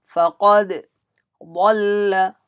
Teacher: Qaf heavy letter must be read with a strong voice. Dal has qalqala read with echo sound.